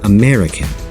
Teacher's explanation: In American, out of 4 vowel syllables, only the second one is stressed, American, and the other 3 vowels are unstressed, American.